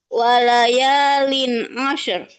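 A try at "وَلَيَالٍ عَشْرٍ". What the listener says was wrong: Tebalin. Asyur. Asyur. Tebal. Jangan asyur. Kalau asyur tipis. Asyur. Tebal.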